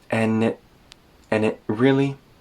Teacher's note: the D in and disappears, the T in it turns into a glottal stop